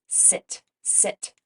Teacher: our tongue creates a narrow opening for the air to just sort of flow through and we don't turn our voice on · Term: S sound